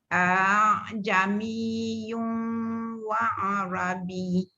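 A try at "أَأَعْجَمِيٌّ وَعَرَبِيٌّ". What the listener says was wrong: B tu dia tak boleh B saja. Dia kalau ba ya mati bawah B tu memang kita boleh sebut B kan. Tapi sekarang dia ada ba ya dengan sabdu tu. Wa Arabi. B. Tekan sikit.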